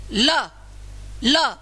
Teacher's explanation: बाहर निकलेगी हवा को निकलने के लिए रास्ता कहां से मिलेगा साइड से बगल से जीभ के बगल से हवा निकल जाती है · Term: पार्श्विक वर्ण